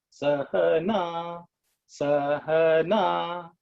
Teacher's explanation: vertical line above the vowel is always indicating that it has to be at a higher pitch. So in the case of Sahana, Sa is low, Ha is in the middle, Na is at the top. So it's 1, 2, 3.